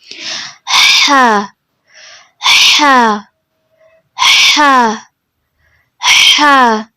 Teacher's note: زبان کی جڑ کو حلق کی طرف مضبوطی سے دباتے ہوئے باریک اور رگڑ کھاتی آواز میں · وسط الحلق، یعنی کہ حلق کے مڈ والے پورشن سے ادا ہوتا ہے